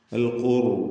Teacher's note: അൽ ഖുർ എന്ന് പറയുമ്പോൾ റായിനും തഫ്ഖീമാണ്. സാക്കിനത്തായ റാഹ് തൊട്ടുമുമ്പിൽ ദ്വമ്മ് വന്നിട്ടുണ്ട്. ഇവിടെ തഫ്ഖീം ചെയ്താണ് റായിനെ ഉച്ചരിക്കുക.